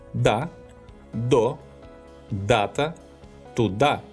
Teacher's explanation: specifies the sound d pronounced without aspiration